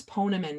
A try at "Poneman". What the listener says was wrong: It's actually Pa, like Papa. Everybody pronounces it wrong.